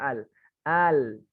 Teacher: Itu nanti ada huruf lam. Lam yang ditempelkan bukan ujung lidahnya, Ustaz, tapi seluruhnya, tepi ujung lidah.